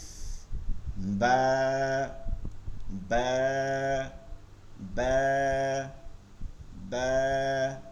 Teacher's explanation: দুই ঠোঁটের ভিজা জায়গা থেকে বা